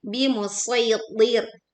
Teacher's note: D-nya tebal, kemudian ro-nya tipis. Karena didahului kasroh.